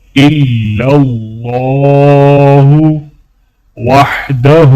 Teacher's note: ہا کے اوپر الٹا پیش ہے تو ہا کو تھوڑا کھینچا جائے گا